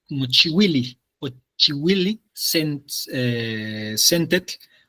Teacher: no sonaría la H porque el siguiente es consonante